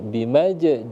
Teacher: jim yang sukun, maka dia dibaca qalqalah sughra, kecil ya. Karena dia berada di tengah-tengah kata ya, tengah-tengah ayat, bukan di akhir.